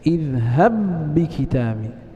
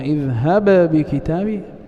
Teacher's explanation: فلاحظ أننا ننطق بباء واحدة مشددة اذهب بكتابي ولا نقلقل الباء الأولى، فإذا قلنا اذهب بكتابي هكذا لم ندغم.